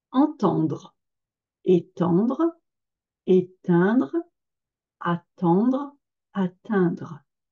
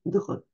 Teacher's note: Donc, on note que également il y a la prononciation à la fin de ces verbes, dre, D-R-E, avec un R qui racle quand même pas mal